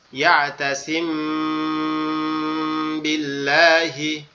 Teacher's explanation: লাম মোটা হবে না, লাম চিকন করে হবে